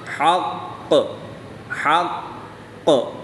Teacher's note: قاف حروف کلکلہ میں سے ہے اور جب حروف کلکلہ مشدد ہوں تو ان میں کلکلہ خوب جماؤ کے ساتھ کریں گے۔ حا قاف زبر حق حق، قاف زبر قا حق، قاف حرف مستعلیہ میں سے بھی ہے تو اس کو پر یعنی موٹا بھی پڑھیں گے۔